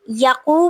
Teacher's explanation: یقو پہ واو مدہ ہو رہی ہے کیونکہ واو ساکن سے پہلے پیش آ رہی ہے